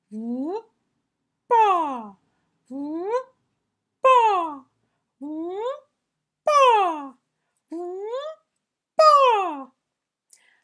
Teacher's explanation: I call it bursting bubbles because it's very, very gentle. Yep, it's not an explosion. It's just a gentle pop.